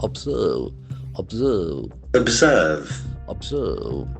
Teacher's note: The accent falls on the second syllable and the letter S has got Z sound.